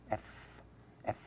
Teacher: the lower lip is touching the upper teeth